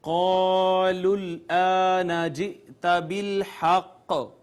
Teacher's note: حمزہ کو جھٹکے سے پڑھا، قاف پہ ہم رکے، قلقلہ کیا ہم نے